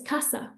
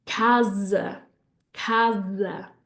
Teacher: when an S comes between two vowels, it's going to make a Z sound